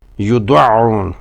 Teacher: عین کا مخرج حلق کا درمیانی حصہ ہے، اسے وسط حلق یعنی مڈل آف دی تھروٹ کہا جاتا ہے۔ اس کی ادائیگی کا طریقہ یہ ہے کہ اسے ادا کرتے ہوئے حلق کے پٹھوں میں تھوڑا سا تناؤ یا دباؤ پیدا کیا جاتا ہے۔